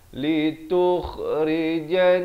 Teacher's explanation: Di sini nun sabdu didengungkan 2 harakat. · Kha ni makhrajnya di hujung kerongkong.